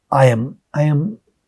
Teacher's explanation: there is a y sound in between